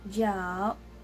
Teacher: So as you can see, it has the third tone. So we're gonna sound like our throat is going downwards as well.